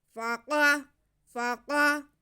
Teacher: یہ قاف حروف مستعلیہ ہے، موٹا قاف پڑھیں گے اسے